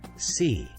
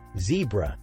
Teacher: The S sound is voiceless and sometimes confused with the Z sound, which is voiced